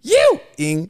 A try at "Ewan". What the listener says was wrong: No, it's not ing because there's no G. You're only doing N, so it'd be Ewan.